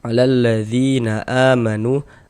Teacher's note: a dibaca panjang badal panjang dua harakat · Kemudian dzi dibaca panjang. Ini mad thobi'i panjangnya dua harakat.